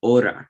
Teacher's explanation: in the word hora, which means hour, the H isn't pronounced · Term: silent letter